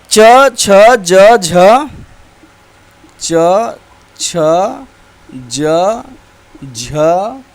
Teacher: तालव्य, तालु से उच्चारण होने वाले व्यंजन